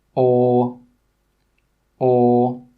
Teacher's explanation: this sound comes from the very back of the mouth at the middle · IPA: ɔ